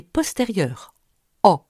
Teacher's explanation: Quand le A est long, il n'est pas antérieur, A, mais postérieur, O.